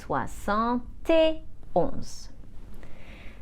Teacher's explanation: we link with the T at the end of soixante, and the vowel at the start of et and we pronounce it tuh